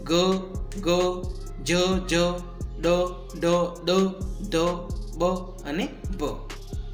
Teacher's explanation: નાદતંત્રીનું વધુ માત્રામાં કંપન થાય ત્યારે જે ધ્વનિ ઉત્પન્ન થાય તેને ઘોષ ધ્વનિ એટલે કે વ્યંજન કહે છે.